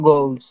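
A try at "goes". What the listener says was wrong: কাজল গোজ। এখানে এস হবে না, জ সাউন্ড হবে, গোজ। রাইটে এস হবে, বাট গোজের মধ্যে জ সাউন্ড হবে, হ্যাঁ। তাহলে কাজল যায়, কাজল গোজ।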